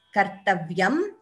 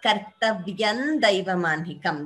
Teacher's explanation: You could either chant the Anuswara completely as Kartavyam or Kartavyan Daivamanhikam. That is also, both are right.